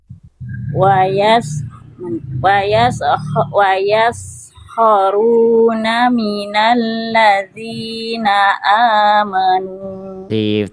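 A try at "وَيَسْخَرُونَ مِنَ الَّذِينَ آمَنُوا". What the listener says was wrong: Tapi udah bagus.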